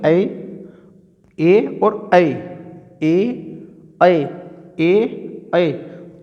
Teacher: तो आवाज़ कंठ से भी निकल रही है और हमारी जो जीभ है वो तालु पे भी लग रही है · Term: कंठ तालव्य